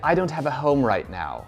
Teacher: british people tend to have what we call a soft landing and americans kind of go down a lot more when they're speaking